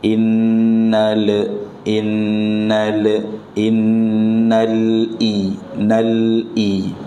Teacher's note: lam sukun dibaca dengan izhar jelas, jangan mantul.